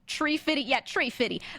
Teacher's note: any of my friends with Caribbean accents there is never a th sound